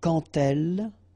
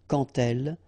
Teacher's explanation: when you will have this d, you will phonetically pronounce it like t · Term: liaison